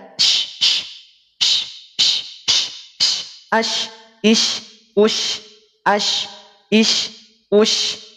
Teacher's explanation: Huruf shin ini adanya di tengah-tengah lidah. Maka ketika mengucapkan huruf shin tidak perlu dimonyongkan.